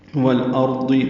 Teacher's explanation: والارض میں لام ساکن پڑھا جائے گا، یہ اظہار قمری ہے